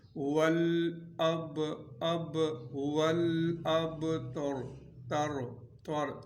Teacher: تا کو باریک اور را کو پر پڑھنا ہے، موٹا پڑھنا ہے